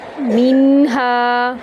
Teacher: میم کو میم میں داخل کریں گے اور میم کو ایک الف کے برابر لمبا کریں گے غنہ کے ساتھ۔